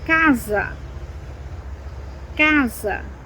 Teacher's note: When you have just one S and it's between two vowels, it sounds like a Z